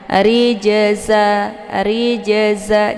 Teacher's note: adalah terdapatnya di pertengahan maka ini dinamakan dengan Qalqalah sugro jadi cara bacanya dipantulkan dengan pantulan yang ringan · cara bacanya ja-nya dipantulkan dengan pantulan yang ringan